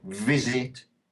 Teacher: The V, which in Spanish would be uve, obviously, vibrates a lot in English.